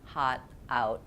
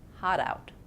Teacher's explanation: I don't break between hot and out. Hot, out. I link the two, hot, out.